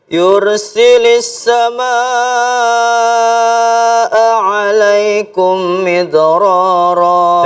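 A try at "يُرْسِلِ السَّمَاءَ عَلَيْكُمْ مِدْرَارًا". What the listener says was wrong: Dengung. Alaikum. Tahan dulu. Yursili. Iya, jadi setiap ada dengung kasih haknya dulu. Tahan dulu kayak inna ya. Thumma a'lantu ya. Alaikum midrara. Jadi suaranya dimainkan pada saat dengung-dengung itu, ya. Yursilis samaa alaikum midrara.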